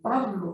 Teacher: Se dice que la P es bilabial, son los dos.